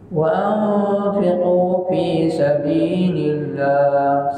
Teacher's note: sebelum Allah berbaris bawah, Allah dibaca dengan nipis.